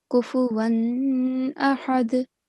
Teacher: make sure that there is a soft nasal sound on tanween